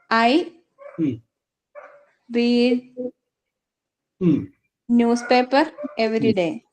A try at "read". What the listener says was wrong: എഴുതുമ്പോ correct ആവും, പറഞ്ഞാലൊരു mistake ഉണ്ട്. ആ റീഡ് എന്നുള്ളത് പാസ്റ്റ് ടെൻസ് ആണ് പറഞ്ഞിട്ടുണ്ടെങ്കിൽ റെഡ് എന്ന് പറഞ്ഞു കൊള്ളാം. റീഡ് റെഡ് എന്നാണ്. Present read, past റെഡ്, past participle റെഡ് എന്നാണ്. സ്പെല്ലിംഗ് സെയിം ആണ്, പക്ഷെ റെഡ് എന്ന് പറയാം.